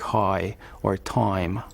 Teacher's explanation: pronouncing the IE vowel the I sound in a word like high or time um further back in the mouth than other people do